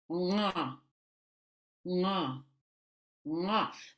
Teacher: Now this is an N, but it's a guttural N.